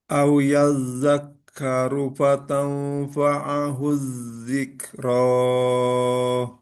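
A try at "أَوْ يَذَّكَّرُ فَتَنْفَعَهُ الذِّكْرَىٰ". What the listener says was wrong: Nah, ini kalau nggak bertemu hamzah cukup dua aja. Dzikro.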